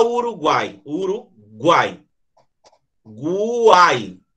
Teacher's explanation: Desce no U, sobe no A e desce no I. Então eu tenho uma semi, uma vogal e outra semi. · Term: tritongos